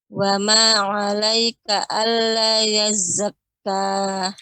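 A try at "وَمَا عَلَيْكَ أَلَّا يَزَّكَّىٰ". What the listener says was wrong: Lanya lebih dipanjangkan sedikit, artinya lebih ditekan ya. Wa ma 'alaika alla yazzakka.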